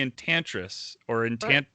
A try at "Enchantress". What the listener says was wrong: Enchantress. No, enchant. Like just the word enchant stress on the end.